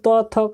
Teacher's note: हमारा जो जीभ है वह दांत में जाकर के टच करता है तब उसका उच्चारण होता है